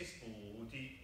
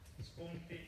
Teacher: make the N goes almost through the nose